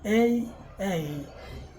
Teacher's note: front of tongue up and wide mouth